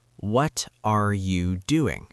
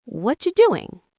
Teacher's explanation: You might hear watcha and think it's a new word, but it's just words connected.